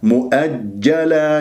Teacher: وسط اللسان ينطبق مع ما يحاذي من سقف الحنك الأعلى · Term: جيم